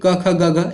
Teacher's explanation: क ख ग घ ये पूरी पहली लाइन जो है वो कंठ का उच्चारण स्थान देती है।